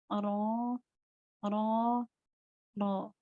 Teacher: pengucapan huruf yang disertai dengan bergetarnya ujung lidah. Nah, ini hanya ada 1 yaitu huruf ro. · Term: takrir